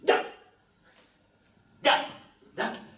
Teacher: La consonne D, par exemple, se prononce en donnant du bout de la langue contre le dent du haut.